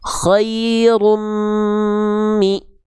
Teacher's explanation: Karena runnya masih dibaca jelas. Khairun mi, harusnya an-nya dileburkan ke mim.